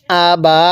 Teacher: ভাবে শিখবো এরপরে আবা হামজা এর মধ্যে কিন্তু টান দিব না বা এর মধ্যে এক আলিফ টান দিব